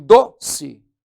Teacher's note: quando você fala em doce, o do é a sílaba tônica, mas não tem acento.